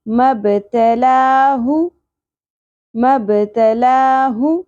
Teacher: ہ کو اقصی حلق سے ادا کرنا ہے گہرائی کے ساتھ، اور پیش کو زیادہ نہیں کھینچنا، ہو نہیں پڑھنا۔